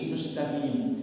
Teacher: itu kalau qaf ulama-ulama Hadramaut pakai G